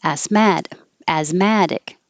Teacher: Asthmatic, the adjective, the stress moves to the mad. Asthmatic. But both of them, the a vowel is as, mad.